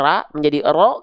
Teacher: diangkat pangkal lidahnya sehingga ketika fathah vokal huruf ro itu yang harusnya ra menjadi ro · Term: tafkhim